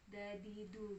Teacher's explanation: Jadi punggung ya, punggung ujung lidah bertemu dengan pangkal gigi seri atas. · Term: makhraj dal